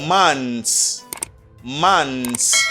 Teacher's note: for the plural, you don't pronounce the TH sound